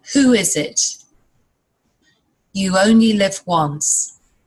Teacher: There's a very soft w sound that links the two words together.